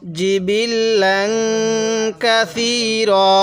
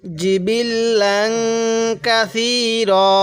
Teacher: জিমটা একটু চাপ দিয়ে পড়বো, এই ছাটা একটু নরম করে পড়বো।